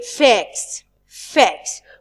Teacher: We drop it slightly. We don't pronounce the t sound in the word facts.